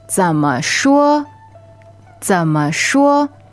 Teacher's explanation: that 怎 goes low, and 说 is first tone, flat and high.